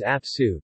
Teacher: the loss of final vowel in the word apa (to take), when it becomes ap-su (to take out) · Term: vowel suppression